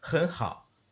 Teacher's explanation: And hao is because you're getting this glottal stop not having to finish all the way because it's at that bottom arc of the third tone